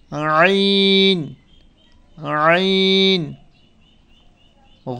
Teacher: আইন, গলার মাঝখান থেকে আইন আইন